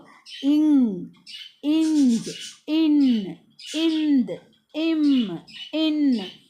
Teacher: மூக்குல இருந்துதான் சவுண்டே வரும் அப்போ ங் இங் ன் இந்த் ம் இன் இந்த எழுத்துக்கள் பார்த்தீங்கன்னா மெல்லின மெய்யெழுத்துக்கள் இதை மூக்கை இடமாகக் கொண்டு பிறக்கிறது · அடுத்தது மெல்லின மெய்யெழுத்துக்கள் என்ன இது எங்க இருந்து பிறக்குதுன்னா நம்ம சொல்லி பாருங்க ஞன நமனான்னு சொல்லும்போது மூக்குல இருந்துதான் சவுண்டே வரும்